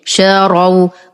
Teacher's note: ولبئس ما شاروا بفتح الراء مع التفخيم، شاروا وليس شاروا.